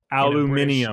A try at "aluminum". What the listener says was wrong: In a British accent. That's just not correct. There's an extra syllable in there. They throw an I at the end. But there's no I there. It's aluminum.